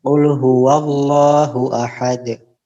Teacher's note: Jangan ada jeda antara huruf dal dengan qalqalahnya.